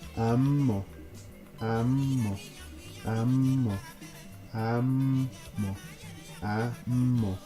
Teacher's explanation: Third person plural, a low tone, a high tone, and a falling tone, and this is pronounced ammo, ammo. Low tone, high tone, falling tone